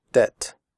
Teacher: In the word debt, the b is silent. We do not say debt.